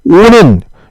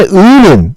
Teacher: 오므라들지 않죠. 따라서 우리가 오는 발음할 때 입술이 동그랗게 오므라들었기 때문에 우리가 원순모음이라고 하고요.